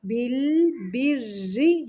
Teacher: یہاں پہ را باریک ہوگا